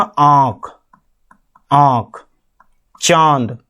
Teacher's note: जैसे आपका अनुनासिक में आपका क्या जाता है, देखो देखो मैं बताता हूं, नाक और मुंह से जब आप बोलते हो ना आंख, आंख, चांद, तो ये आपका जो आता है ना, तो नाक और मुंह से दोनों से बोलना चांद, नाक से भी बोलना पड़ रहा है आपको और मुंह से भी बोलना पड़ रहा है